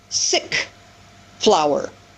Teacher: So he deleted the L in that final consonant cluster